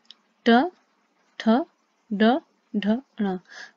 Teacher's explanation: ऐसे देखिए, मूर्धा, ट, ठ, ड, ढ, ण। हम देखेंगे हमारी मुंह की छत का अगले वाला भाग हमारी जीभ से स्पर्श हो रहा है